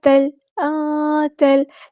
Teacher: تا کو ہم نے لام کے ساتھ ملا دینا ہے، ہمزۃ الوصل وہاں ڈراپ ہو جائے گا · یہاں پہ نون کی آواز کو ہمیں چھپانا ہے، اخفا ہو رہا ہے